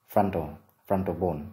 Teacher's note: Từ này có hai âm tiết, trọng âm rơi vào âm tiết thứ nhất